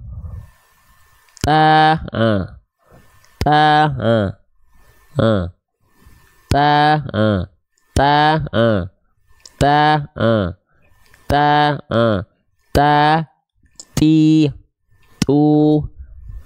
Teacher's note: ujung lidahnya ke Pangkal e gigi seri atas kita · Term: huruf ta